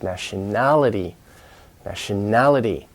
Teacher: you've got a second level stress and then the main level stress